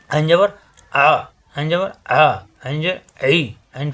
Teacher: কন্ঠনালীর মাঝখানে চাপ দিয়ে উচ্চারণ করতে হবে। শুধু হরফ চার আলিফ পরিমাণ টান হবে।